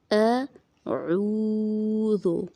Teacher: عین کے آواز کو تھوڑا سا کھینچنا کیونکہ یہاں پہ واو مدہ ہے. اعوذ، ذال کو نرم پڑھنا.